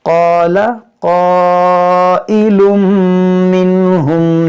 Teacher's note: یہاں پر جو مد ہے مد متصل ہے، یہ دونوں حروف مشتعلیہ ہے، دونوں کو موٹا پڑھیں گے